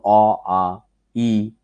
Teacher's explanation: এই শ্বাসবায়ুটা আমাদের মুখ বিবরে কোথাও বাধা পাচ্ছে না, সরাসরি বের হয়ে আসছে এবং মুখ খোলা রেখে আমরা উচ্চারণ করতে পারছি, তাই এটি স্বরধ্বনি।